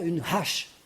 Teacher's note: On entend bien le he. Expirer, pas aspirer, parce que là, on s'étouffe. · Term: H consonne